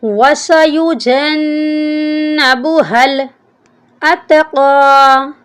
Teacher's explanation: وَسَيُجَنَّبُ، یعنی جیم کو نون کے ساتھ نہیں ملاتے، نون کے اوپر شد ہے، نون مشدد ہے، یہاں پر غنہ بھی کریں گے اور جیم کے ساتھ ملا کر بھی پڑھیں گے